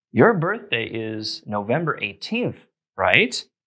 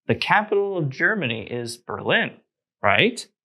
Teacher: just make a statement and add right at the end also don't forget the rising intonation at the end to make it sound like a question